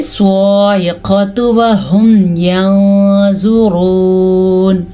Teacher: تا کے اوپر جو پیش ہے اس کو ہم لمبا نہیں کریں گے